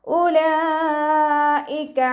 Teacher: മദ്ദക്ഷരത്തിന് ശേഷം അതേ വേർഡിൽ തന്നെ ഹംസയും വന്നു. മദ് വാജിബ് മുത്തസിൽ 4 or 5 കൗണ്ട് നിർബന്ധമായിട്ട് നീട്ടിക്കൊടുക്കണം കേട്ടോ